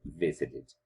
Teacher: golpe de voz cae en visit y no en sit, solamente añadimos ed, no doblamos la última consonante, visited.